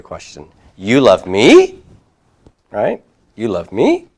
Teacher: I can raise my intonation at the end with it to create a question